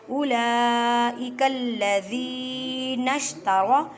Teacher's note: را کو موٹا پڑھیں کیونکہ را کے اوپر زبر ہے